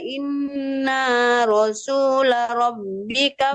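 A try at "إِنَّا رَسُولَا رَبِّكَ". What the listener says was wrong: Rasula panjang lanya.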